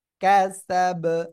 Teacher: কলকলার অক্ষর বা এখানে সাকিন হচ্ছে ওয়াকফের সময়, এই জন্য ধাক্কা দিয়ে পড়বো